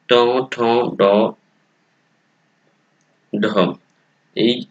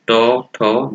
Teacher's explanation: এই ধ্বনিগুলো উচ্চারণের ক্ষেত্রে জিভের সামনের অংশ উপরে গিয়ে শক্ত তালু স্পর্শ করে, এই জন্য এগুলোকে বলা হয় তালব্য দন্তমূলীয় ধ্বনি।